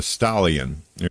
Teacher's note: He pronounces an A sound like an O sound and an O sound like an A sound.